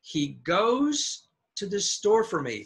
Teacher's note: The pronouns are repeated words, and so we go low.